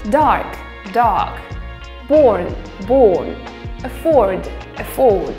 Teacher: The R sound is basically missed before a consonant.